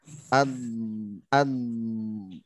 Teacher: Nah, itu huruf dod. Ya. Yang keluar dari tepi lidah bertemu dengan gigi geraham bagian atas, boleh kanan, boleh kiri.